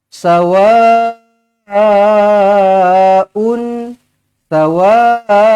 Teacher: baca dengan empat ataupun lima harakat mad wajib muttasil